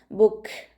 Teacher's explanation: കാഫ് സുക്കൂനിൽ ആകുമ്പോൾ കുറച്ച് air pass ചെയ്യുന്ന സൗണ്ട് കൊടുക്കുക